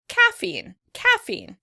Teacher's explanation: in British English the word would be stressed on the first syllable